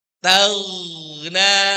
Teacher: Karena ghain bukan G-nya Indonesia, juga tidak punya sifat qolah, tidak memantul.